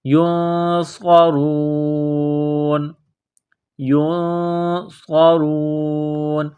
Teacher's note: صاد کو موٹا کرنا ہے، صاد میں سیٹی کی آواز پیدا کرنی ہے · نون ساکن کے بعد صاد ہے تو یہاں غنہ کریں گے، اخفا کریں گے، آواز ناک میں چھپائیں گے